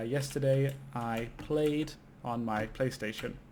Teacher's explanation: the most standard ed sound, which is just a very soft d at the end of the word